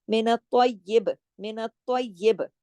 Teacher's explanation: با پہ کلکلا ہوگا کیونکہ ہم با پہ رکے ہیں، اس لیے اس کی زیر کو ہم پوز کریں گے.